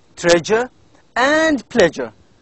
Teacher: this is a voiced palatal as in treasure and pleasure